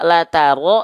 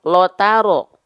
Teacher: Kalau vokal A itu adalah huruf yang tipis. Kalau dia keluarnya vokal O, maka dia termasuk ke dalam huruf yang tebal.